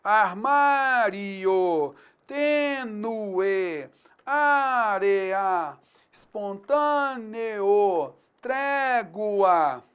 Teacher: você vai ter a antepenúltima sílaba tônica, o entendimento de que há aí uma proparoxítona.